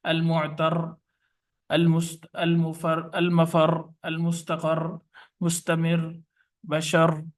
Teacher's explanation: शद वाली रा पर वक्फ करें, वक्फ इस तरह करें कि तशदीद बाकी रहे और हरकत का कोई हिस्सा जाहिर ना हो